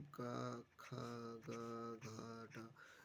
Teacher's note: कंठव्य यानी कि कंठ से आवाज निकलती है